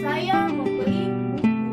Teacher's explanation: tekanan pada kata buku, maksudnya yang saya beli memang buku, bukan yang lain.